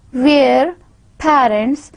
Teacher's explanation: Then a combination of E and schwa sound, here, where, parents, a combination of two vowels, A and schwa